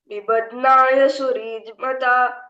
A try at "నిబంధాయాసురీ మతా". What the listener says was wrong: ఒక నిమిషం ఉండ నిదాపు అక్కడ ఎందుకంటే ఫస్ట్ టైం చెప్తున్నావు కదా నిబంధాయ సూర్యకు దీర్ఘం ఉంది కదా